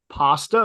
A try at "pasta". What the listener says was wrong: No, pasta. There's no E.